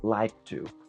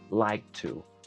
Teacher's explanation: Así que like to va a sonar como like to. Ese sonido de K lo vamos a mantener y vamos a liberar el aire con el sonido de la T. Así que like to suena como like to.